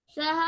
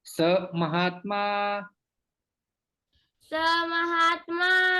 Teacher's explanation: यहाँ पर संधि होती है। विसर्ग का यहाँ पर लोप हो जाता है।